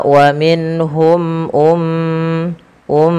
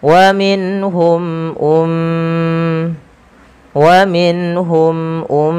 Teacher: e mim dan ba nanti dia ditahan kemudian pfal UM Mia tahan suara m ya karena ia mim berharakat tasdid dan kita hukumi dengan bacaan gunah